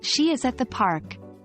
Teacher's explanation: is and at are less important than she, the, and park, so they would likely be pronounced in their weak forms